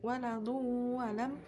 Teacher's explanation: memasukkan tanwin ke dalam wawu sehingga bunyi tanwin hilang berganti dengan wawu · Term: idgham bi gunnah